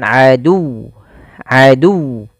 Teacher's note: bukan atau misalnya adu tapi dia ditekan huruf wwnya adu adu karena dia tasdid masukkan dulu ke wau tasdidnya baru dimatikan liba'din adu adu ya bukan adu bukan adu jangan dipanjangkan tapi